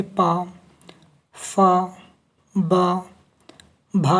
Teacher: ओष्ठे ध्वनि उच्चारण के और व्यंजन की बात करता हूँ, तो जैसे पा, फा, बा, भा इत्यादि ओष्ठे ध्वनि के उच्चारण हैं।